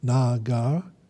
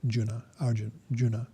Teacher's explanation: The first two A's, the first two vowels are long, Nagar, and then the last two are short, Juna